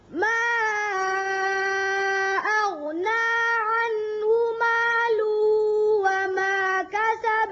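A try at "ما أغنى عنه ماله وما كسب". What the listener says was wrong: مالوہ ظاہر کر کے پڑھیں، اچھی طرح لام کی پیش ظاہر کریں، پھر پڑھیں یہاں سے.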